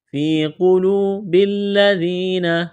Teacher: با کو لام کے ساتھ ملائیں گے · ذال کو نرم کرنا ہے، یا مدہ ہے، ایک الف کے برابر کھینچنا ہے